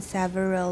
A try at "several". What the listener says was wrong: Several. Okay, first of all, it's not sa, and second, it's only got two syllables. Everyone, several.